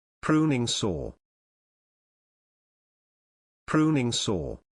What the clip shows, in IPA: ˈpruː.nɪŋ ˌsɔː